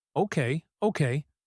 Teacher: The okay is a yielding rhythm. It is fast and repeated. It shows he is giving in.